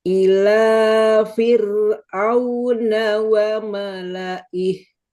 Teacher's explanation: Firnya harus tipis gak boleh firaun